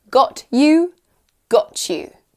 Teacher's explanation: T and y often sounds like ch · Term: Assimilation